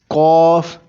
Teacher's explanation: پہلے کاف قلم کو موٹا کر کے پڑھیں گے